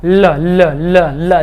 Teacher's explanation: अब इसी तरह पार्श्विक व्यंजन, पार्श्विक व्यंजन मतलब जब हम लोग बोले कि जिस व्यंजन का हम लोग उच्चारण करें तो जो हवा निकले वो जीभ के बगल से निकले, जो वायु निकले वो जीभ के बगल से निकले।